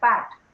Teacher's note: p of pat is a bilabial sound